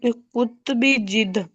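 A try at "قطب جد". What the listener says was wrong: कुतु, काफ तो आप पर पेश होगी, कुतुबी जद्दी।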